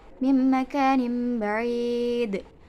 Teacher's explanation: Terdapat qalqalah kubro dan dibaca harus dengan mantul